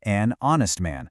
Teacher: honest starts with a totally silent H, right? So, it has an O sound which means it gets an honest man.